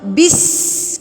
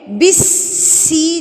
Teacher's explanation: سین اور شین، اس کی نا سیٹی آنی چاہیے، یہ سیٹی والے حروف میں سے ہے۔